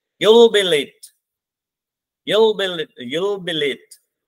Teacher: तो इसमें हमारा इंपॉर्टेंट वर्ड लेट ही है, उस पे क्या लग जाएगा, फॉलिंग राइजिंग टोन लग जाएगी। यू हमारा प्रनाउन है, कुछ नहीं लगेगा।